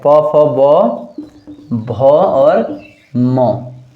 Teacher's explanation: उच्चारण का स्थान होठों पर होता है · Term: ओष्ठ वर्ग